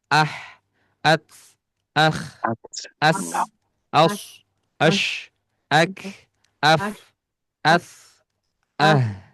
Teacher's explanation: semuanya ada sifat hamas atau mengalirnya udara, nafas